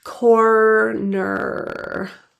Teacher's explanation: Many ESL speakers, they drop R's, especially in words with many R's in them, like the word corner. So focus on two full bunched curled back R's.